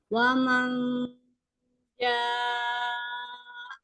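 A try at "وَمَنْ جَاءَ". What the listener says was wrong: Jadi jangan ada a-nya itu ngagetin itu jangan ya. Jadi pada saat posisi hamzahnya itu tinggi gitu kan, ja-nya kan naik kan, nah disukunkan di hamzahnya pada saat posisi yang tinggi itu, jadi nggak diturunkan lagi itu.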